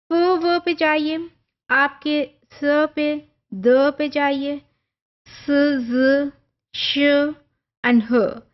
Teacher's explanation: अब सारों में आपको फ्रिक्शन फील हो रही है, ये मैनर है, बट पॉइंट तीनों में सारी की सारी साउंड्स में डिफरेंट है। और आप इन सारों को जब आप इकट्ठे आप वन बाय वन फ्रिकेटिव्स को ही प्रोनाउंस करते हैं, प्रोड्यूस करते हैं, तो आपको फील होता है कि जो एयर पैसेज है वो कैसे डिफरेंट पॉइंट पे वो फ्रिक्शन आपको फील होती है।